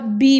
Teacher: जब हम इनको प्रोनाउंस करते हैं ना, पी बोलते हैं या बी बोलते हैं, तो ये दोनों होंठ आपस में मिलते हैं, इसलिए ये बाइलेबियल हैं।